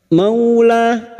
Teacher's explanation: Mau fathah bertemu waw sukun kita lunakkan seperti bertemu dengan huruf abjad u. Maula lah alif kecil di atas 2 harokat mad tabi'in.